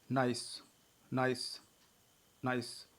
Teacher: तो इसमें आ और ई मिला हुआ है, तो नाइस में भी हम डिप्थांग संयुक्त स्वर का प्रयोग करते हैं